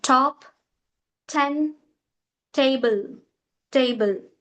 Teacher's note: t sound which comes under alveolar sound, which means to use tongue, the tongue which touches behind teeth